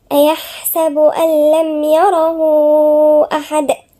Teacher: الدال هنا طالما وقفنا عليها يبقى فيه ايه؟ قلقلة